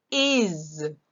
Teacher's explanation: Remember the S at the end? We hear Z.